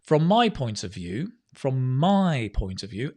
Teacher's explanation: emphasis on the my